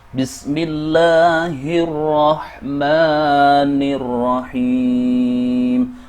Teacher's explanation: huruf al tidak diucapkan. Sebaliknya, huruf al digabungkan ke dalam huruf ra. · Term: Al-Shamsiyyah